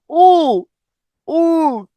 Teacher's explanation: একটু হাত দিলে দেখতে পারবেন যে জিহ্বা কিন্তু পিছনের দিকে চলে গেছে। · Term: পশ্চাৎ স্বরধ্বনি